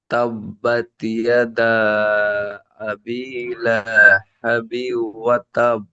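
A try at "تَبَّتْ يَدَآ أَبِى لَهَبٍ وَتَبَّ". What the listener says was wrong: বিউ, এখানে একাই গুণনা করবেন। তানবিনের পরে ইউমিনের চারটি অক্ষর মধ্যে ও এসেছে, ঈদগামে নাকিসে গুণনা হবে।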